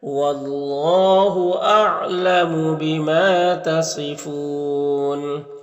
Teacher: قال انتم شر مکانا، واللہ، یہاں پر اللہ کلام سے پہلے واو کے اوپر زبر ہے، تو اللہ کلام کو پر پڑھیں گے۔ بیما میں الف مدہ ہے، صاد حروف مستعلیہ میں سے پر پڑھیں گے، اور وقف کی صورت میں مد عارض وقفی ہوگا